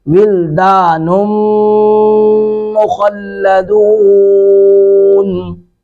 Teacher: نون پر تنوین ہے، نون تنوین کے بعد میم آ گئی. تنوین کے بعد جب میم آتی ہے تو نون تنوین کو میم میں مدغم کر دیتے ہیں. تو یہاں پہ نون تنوین کو ہم مدغم کریں گے تو نون کو میم سے ملائیں گے تو گناہ کریں گے، ادغام با گناہ ہوگا.